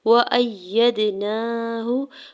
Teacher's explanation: واو کے زبر کو جلدی سے ادا کرنا ہے، حمزہ کے زبر کو یا مشدد کے ساتھ ملاتے ہوئے پڑھنا ہے